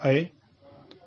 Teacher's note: अय जो है वो कंठ तालु है और अय के साथ ए भी कंठ तालु होता है। कंठ तालु का मतलब है कि जीभ के स्पर्श से बोले जाने वाले वर्ण, उसे ही कंठ तालु कहते हैं।